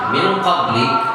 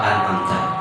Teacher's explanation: An'amta izhar, pada saat nun ketemu qaf ikhfa. Nah, min qablik itu gunnahnya lebih sempurna dibandingkan pada saat nun sukun izhar an'amta.